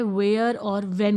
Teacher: same है व for one एक डब्लू भी होता है लेकिन डब्लू जो साउंड है आपका वो व राउंडेड लिप मूवमेंट के लिए होता है